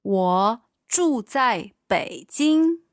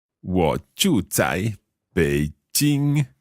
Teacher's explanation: Beijing, that's a third tone and a first tone.